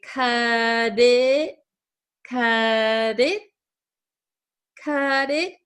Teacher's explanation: a flap T it is a t that sounds like a d